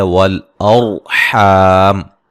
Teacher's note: را ساکن سے پہلے زبر ہے، را کو موٹا ادا کریں گے۔ حا الف مدہ ہے، حا کو واضح نکالیں گے، وقفاً بڑی مد کے ساتھ پڑھ سکتے ہیں۔